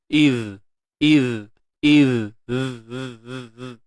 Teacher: Huruf zal ni dia kena keluarkan hujung lidah sikit. Iz. Dan insyaAllah bila kita sempurnakan makhraj bagi zal ni, iz, dan kita fahamkan betul-betul maksud rakhawah yang ada pada sifat zal ni, maka sempurnalah bunyinya nanti.